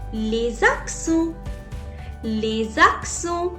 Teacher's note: Les, z sound is there. Why am I making a z sound? Because s is followed by a vowel. So repeat after me and say les accents.